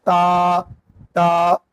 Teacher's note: जुबान की नोक सना उलिया की जड़ से लगाएंगे